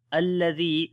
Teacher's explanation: zal we read in soft sound and also we long due to ya madda